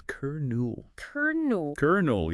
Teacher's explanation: And we've somehow gained an R sound in the middle. It's like a phantom R.